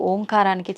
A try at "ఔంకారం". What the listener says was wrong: అది ఓంకారం కాదు, ఔంకారం. మనం పలకడమే దాన్ని తప్పు పలుకుతున్నాం. ఔం అని ఉచ్చరించినప్పుడు అకారము ఉకారము రెండూ పలకబడి ఓంకారం దీర్ఘమవుతుంది.